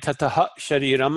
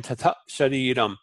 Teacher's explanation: So instead of saying tata ha shariram, I'm saying tata shariram. I'm just making a short stop. Huh. Almost like huh. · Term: short glottal stop